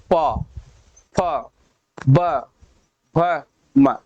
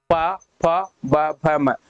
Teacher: हमारे ओठ, हमारे ओठ क्या रहे, एक दूसरे को टच कर रहे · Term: ओष्ठ